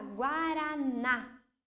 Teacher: A palavra guaraná, o na, lá no final, é a sílaba mais forte.